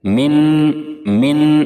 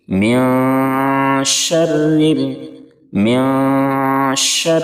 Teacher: اخفا کرتے ہوئے زبان بیچ میں معلق رہے گی